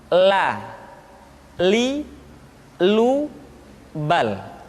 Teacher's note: Selanjutnya huruf la diucapkan dengan mengangkat ujung lidah kita, dengan disentuhkan dengan langit-langit.